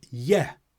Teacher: Yes commonly becomes yeah. The S gets left off when we're being more informal.